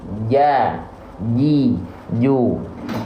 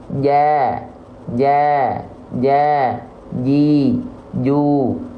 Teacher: Jim itu keluar dari tengah lidah kita yang kita tempelkan ke atas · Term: huruf Jim